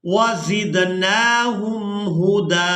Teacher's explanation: जहाँ पर भी वक़फ़ करना हो और उसका आखिरी हरफ अगर उसके ऊपर 2 ज़बर हैं तो वहाँ एक ज़बर अदा की जाती है और उस हरफ को एक अलिफ मिक़दार खींच कर अदा किया जाता है। तो यहाँ दाल को एक अलिफ मिक़दार खींच कर अदा करेंगे।